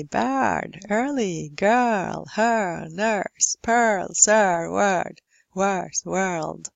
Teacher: Speakers of American, Canadian English, and also many British accents, Irish, Scottish, would pronounce the R in these.